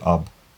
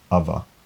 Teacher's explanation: So they would say ab, but with the vowel at the other side they say ava, and the b would turn into a fricative v between two vowels. So ab, ava.